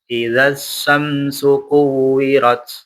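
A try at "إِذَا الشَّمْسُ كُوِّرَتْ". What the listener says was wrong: Sya-nya lebih jelas. Idza syamsu jelas.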